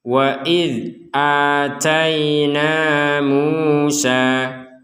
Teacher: Perhatikan, pada pembelajaran sebelumnya kita sudah tekankan bahwa huruf dzal ini tidak dibaca dengan pantulan. Tidak ada pantulan sama sekali untuk huruf dzal.